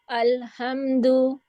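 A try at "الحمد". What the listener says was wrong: नहीं, आपका हाँ निकल रहा है हलवे वाला।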